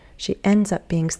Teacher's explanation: I would put a little bit more stress on up